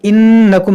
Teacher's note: इन्नकुम नून में गुन्ना होगा, इन्नकुम लकाज़िबून, ये ज़ाल है, लकाज़िबून।